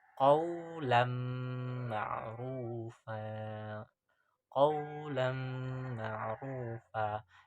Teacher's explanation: memasukkan nun sakinah atau tanwin ke dalam huruf selepasnya